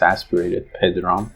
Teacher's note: Then the word, there's a male name, like a boy name, Pedram. Here, Pe, like in English, in Persian is aspirated, Pedram. That's also trilled.